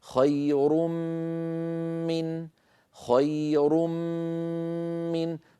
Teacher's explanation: هذه الميم الاولى المنقلبه عن التنوين تكون الغنه مصاحبه لها ومطوله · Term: الغنه الممطوطه, الغنة الممطوطة